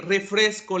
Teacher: Refresco, la sílaba tónica es fres.